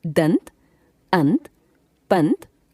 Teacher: इसमें पहले स्वर का उच्चारण होता है और बाद में नासिक्य ध्वनि का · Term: अनुस्वार